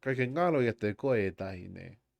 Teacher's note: Yeah, so because there's no glottal stop, it's really is just like you're just lengthening the existing e